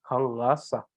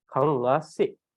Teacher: So it's a more central regional dialect influence. So in more eastern part of Tibet, it is pronounced as kang la sa. But in the central Tibet, it is pronounced as kang la se.